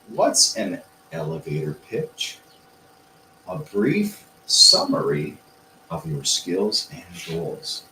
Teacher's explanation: so we need to phrase it in the tone of a question we're lifting the energy